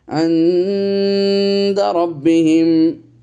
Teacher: এই যে ইখফা করছি, নুন সাকিনের পরে দাল এসেছে, ইখফার অক্ষর।